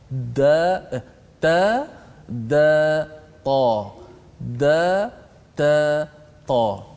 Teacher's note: hujung lidah ditekan ke gusi pengikat gigi ataupun permulaan gigi atas kita itu, berkongsi pada tempat yang sama.